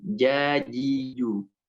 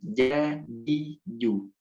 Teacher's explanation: jim itu tengah lidah mengarah ke langit-langit